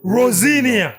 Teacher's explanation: because the S is in between two vowels, it changes to a Z sound. So Rosinia.